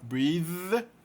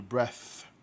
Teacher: No primeiro caso ele é sonoro, breathe. E no segundo caso ele é surdo, breath.